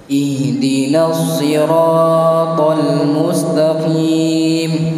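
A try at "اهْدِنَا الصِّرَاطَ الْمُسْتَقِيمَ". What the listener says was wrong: Nih, jangan digerakkan lagi, udah monyong, biarkan. Ihdinas siratal mustaqim.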